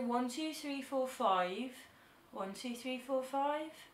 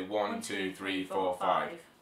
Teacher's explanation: accent's got quite a rhythmic sing songy like tone to it